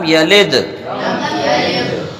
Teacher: جب ہم نوک زبان سامنے والے دانتوں کی جڑ سے لگائیں گے تو وہ لگا کے نہیں روکنا ہے بلکہ لگانے کے بعد کیا کر لینا ہے؟ ہٹا لینا، تب ہمارا قلقلہ ہو جائے گا